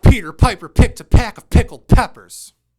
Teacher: you can hear those harsh peas right that's because the microphone is catching the bursts of air coming straight from my mouth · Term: plosives